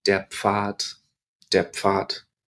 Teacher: notice actually that D when it's at the end of a word can sound a little bit like T